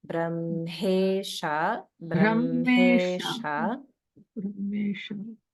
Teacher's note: even though it's written as HM, we want to pronounce that as MH.